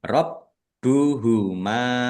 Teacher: bnya dibaca dobel ada tasdidnya ditekan dan ditahan biar tampak dobel · Rabbuhuma mim fathah alif mad thobi'i. Tetapi karena bertemu dengan huruf alif di kata yang berbeda maka menjadi mad jaiz munfasil. Dibaca panjang boleh lima, boleh dua harakat.